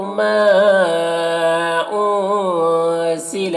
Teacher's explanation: ما میں مد منفصل سے 3-4 الف کے برابر کھینچ کر پڑھیں گے۔